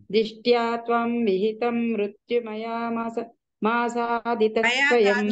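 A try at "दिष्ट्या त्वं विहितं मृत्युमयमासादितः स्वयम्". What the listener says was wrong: మాతాజీ మయా అంటే మైన్ అవుతుంది, మయా కాదు మయ. ఒక్క దీర్ఘం ఇటు పెడితే అంతే, అది పదం అర్థం మారిపోతుంది.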